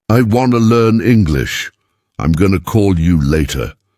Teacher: Want to becomes wanna. Going to becomes gonna. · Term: connected speech